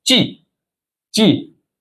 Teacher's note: the fourth tone the falling tone